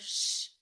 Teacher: you pull that tongue back into your mouth and you're sure that your voice is off because it's that quiet sound. That sh the shh sound is a continuous sound that can be stretched out.